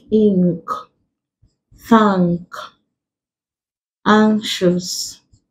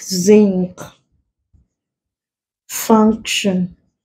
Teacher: So in these words, the N is coming before a k sound. K. We classify it as ng rather than n.